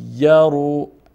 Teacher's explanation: حرف طوی مشدد هست و حرف یا مشدد هست پس طا هم به مقدار دو حرف تلفظ و نطق می‌کنیم و یا را همچنین ی طیر چون حرف اول ساکن و